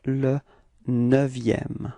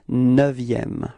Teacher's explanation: be careful because this EU in neuvième is actually open